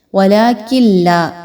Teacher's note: وَلَٰكِن لَا، نون ساکن آ گیا، نون ساکن کے بعد جو حرف ہے وہ لام آ رہا ہے اور لام جو ہے وہ حروف ادغام میں سے ہے، لیکن ایسا ادغام کہ جس میں غنہ نہیں کیا جاتا